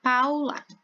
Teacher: É o pau. Agora o lá é um pouco mais fraco.